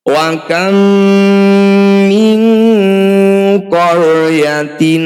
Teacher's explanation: Bunyi nun sukun awalnya berbunyi min. Ketika bertemu qaf kita ganti min ko. Bunyikan eng dan dengungkan 2 harokat. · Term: ikhfa ab'ad